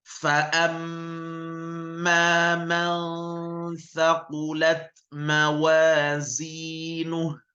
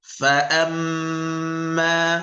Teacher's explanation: Jadi mim bertasydid dibaca dengan dengung, ditekan sebanyak 2 harakat. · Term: ghunnah